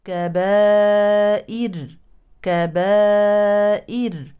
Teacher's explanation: متطرفه متحركه بالفتح اذا هي وصلا مفخمه كبائر كبائر كبائر كبائر اما وقفا تكون ساكنه مسبوقه بكسر اذا هي عند الوقف مرققه